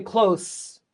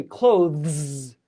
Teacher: You go from a TH to a Z. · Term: Z sound